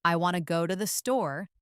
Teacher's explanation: In the sentence, I want to go to the store, the strong words are want, go, and store. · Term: rhythm and stress